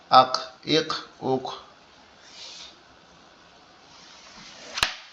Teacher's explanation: কলকলা মূলত পাল্টা আওয়াজ দেয় মানে আওয়াজটা বাড়ি খেয়ে ফিরে আসছে এরকম